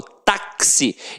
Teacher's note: o X aqui tem som de KS, ou seja, uma letra tem 2 sons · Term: dífono